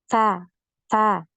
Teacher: nafasnya yang alir itu terdengar atau yang biasa kita kenal dengan istilah Hames